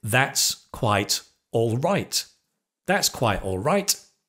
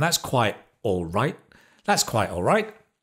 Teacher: The t of the quite, we often drop that sound.